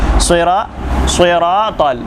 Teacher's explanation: हमने सीखे साद और साद का मखर हमने बताया था के दोनों ऊपर के दांत और दोनों नीचे के दांत इनके दरमियान में जबान आप ले जाकर फजा में छोड़ दीजिए या नीचे के दांतों से टकरा दीजिए उस वक्त स्वाद अदा होगा इसे मोटा करके अदा करना है